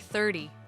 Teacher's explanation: the 10 numbers have the stress on the first part